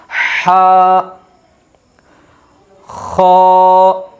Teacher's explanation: ہا کو ادا کرنے کے لیے ہمیں حلق سے آواز نکالنا پڑے گی